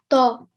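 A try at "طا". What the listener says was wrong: So instead of ta, we read to.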